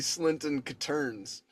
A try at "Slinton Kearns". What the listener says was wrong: Oh, yeah, but with the T had to be silent though. It's got to be like a soft T, so it's Slinton Kearns.